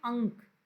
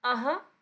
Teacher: इसका उच्चारण स्थान आपका नासिक्य है और इसका उच्चारण स्थान आपका कंठ है। इसको नाक से उच्चारित करते हैं अंक, अह कंठ से उच्चारित करते हैं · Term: अनुस्वार और विसर्ग